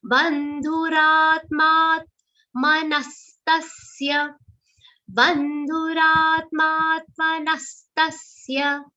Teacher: Only two sounds are long. Ra and ma. And dhu is a short sound. You maintain the aghats, and the aghats on the long sounds will be very subtle.